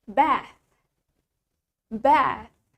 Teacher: in British English, it has the longer A.